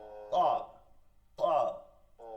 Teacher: কফ জিব্বার গোড়া তালুতে গিয়ে লাগে, আর এই হলকের শেষ থেকে ধাক্কা দিয়ে আসবে, ভারী শব্দ